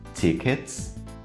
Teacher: O último som antes do S é o som do T, que também não tem a vibração.